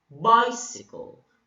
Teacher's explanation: You put a stress on the first syllable while the remaining 2 syllables are unstressed. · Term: dactyl